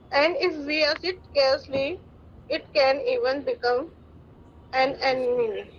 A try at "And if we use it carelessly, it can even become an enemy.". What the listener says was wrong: अब आपने ब्रेक कर दिया. दोबारा करें. पहले अच्छा किया था.